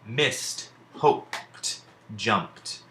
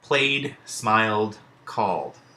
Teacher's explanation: in this case, the D is actually making the sound that we associate with the letter T.